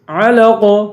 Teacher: آخر میں قاف ہے، قاف کو پر پڑھیں گے اور قلقلہ کریں گے